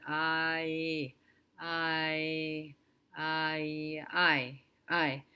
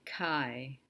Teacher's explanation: taking the ah and adding a y sound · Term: diphthongs